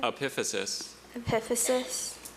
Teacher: the schwah sound in the next to last syllable may be a sticking point for her